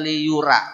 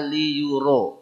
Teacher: jangan baca liyura baca liyuro ro tebal